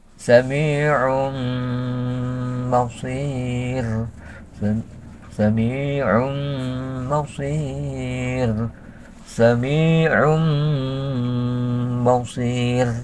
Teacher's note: Sami'um ya, ketika mengucapkan nah itu memakai gunnah, itu masukkan suara itu ke pangkal hidung · Yang namanya iklab yaitu menukarkan ya, menukarkan tanwin ke suara mim serta memakai gunnah. Sami'un, walaupun ditulisnya sami'un, tanwinnya kelihatan tanwin, tapi seolah-olah tidak kelihatan, yang kelihatan mimnya saja.